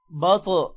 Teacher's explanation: با طا زبر بط، طا موٹا بھی ہوگا اور طا پر قلقلہ بھی ہوگا